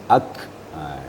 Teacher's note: sifatnya mahmus atau hamas. Jadi harus ada hembusan ak. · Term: huruf kaf